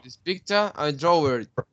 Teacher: There is an intrusive R because he said draw it, right?